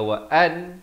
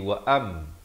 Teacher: Ditukarkan daripada bunyi nun kepada bunyi mim. Daripada wa'an jadi wa'am. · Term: hukum iqlab